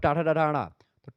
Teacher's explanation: ट ठ ड ढ जो आता है इसे मुर्धा से बोला जाता है